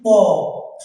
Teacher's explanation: উপরের ঠোট এবং নিচের ঠোঁট এই অষ্ঠ এবং অধর এই দুটো ঠোটকে স্পর্শ করে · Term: অষ্ঠ বর্ণ